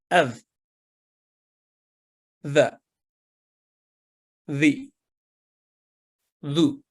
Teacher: ذا تھوڑا سا مسکراہٹ سا، جس کو اسمائلی فیس بھی کہہ سکتے ہیں، ایسے یہ ادا ہوتا ہے کہ زبان کی نوک کو معمولی سا باہر نکال کر اوپر والے دانتوں کے نچلے کنارے سے لگانے سے یہ حرف ادا ہوتا ہے اور باریک آواز میں ادا ہوتا ہے